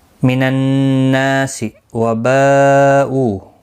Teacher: تنوین کے بعد یرملون کا میم آیا ہے، ادغام مع الغنہ ہوگا، نون مشدد پر غنہ ہوگا، نا الف مدہ بھی ہے، ایک الف کی مقدار کے برابر کھینچ کر بھی پڑھیں گے